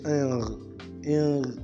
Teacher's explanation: So that means it is pronounced at the velum, and it is when it's pronounced at the velum, it comes out through the nostrils and not through the mouth, and it is voiced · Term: long n